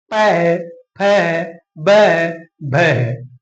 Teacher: जब हम इनका उच्चारण करते हैं तो हमारे होठ आपस में टकराते हैं।